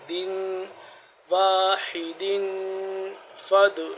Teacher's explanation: دن پہ 2 تنوین آ گئی تو یہاں پہ اخفا ہوگا